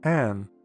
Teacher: with a circumflex the tone goes up and then down